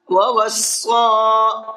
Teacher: وَوَصَّى بِهَا إِبْرَاهِيمُ بَنِيهِ وَيَعْقُوبُ۔ وَوَصَّى صاد کو پر کر کے بھی پڑھنا ہے اور ساتھ ساتھ کھینچ کر کے بھی پڑھنا ہے